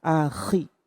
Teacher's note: Jangan lupa ketika akhirati kha-nya digetar.